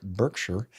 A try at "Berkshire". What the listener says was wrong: No, it's not Berk. No, it's Bark. Bark, Bark.